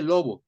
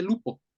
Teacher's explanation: en español se mantiene la o en italiano se mantiene la u